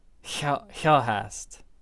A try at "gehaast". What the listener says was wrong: Gehaast. Also pronounce the A.